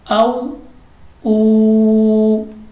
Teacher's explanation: वाउ मद्दा होता है, इसलिए हमने इसको खींच कर पढ़ना है